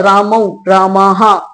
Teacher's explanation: अर्ध विसर्ग का इसका उच्चारण होता है। क्योंकि जब विसर्ग का उच्चारण करते हैं हम तो पूरा विसर्ग का उच्चारण ह के रूप में होता है। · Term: पूर्ण विसर्ग